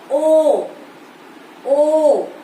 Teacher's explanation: ये अ और उ से मिलकर बना है तो इसलिए है कंठोष्ठ्य